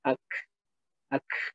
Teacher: Nah, hamsnya itu di situ. Ada desisan tipis di ujung ketika berharokat sukun.